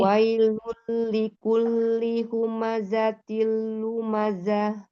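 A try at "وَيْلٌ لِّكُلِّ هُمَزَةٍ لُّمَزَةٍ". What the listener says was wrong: Zahnya itu nyaris ngayun zah. Langsung zah. Zahnya jangan naik. Jangan zah. Zah. Lumazah. Lumazah.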